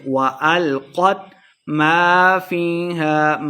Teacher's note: ما الف مد ہے، 2 حرکات لمبا کر کے پڑھیں گے۔